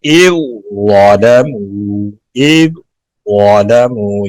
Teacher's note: یعنی ظا کو موٹا ادا کریں گے، ذال مکمل طور پر اس میں داخل ہو جائے گی